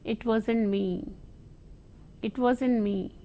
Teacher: that falling tone shows some politeness though you deny but it is in a very polite way complaint and apology